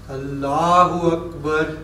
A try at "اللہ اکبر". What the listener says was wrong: وکبر نہیں، اللہ اکبر. وکبر نہیں، آپ پڑھتے ہیں اللہ اکبر، یہ وکبر نہیں کہنا، اکبر کی آواز کو الگ کرنا ہے. اللہ اکبر.